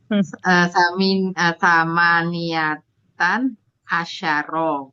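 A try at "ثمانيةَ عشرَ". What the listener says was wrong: Enggak tanwin sama niata. Rokiban ini miliknya si 18. Jadi bukan sama niata asyara. Jadi sama niata asyara rokiban.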